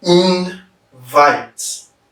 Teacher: Because vite is stressed.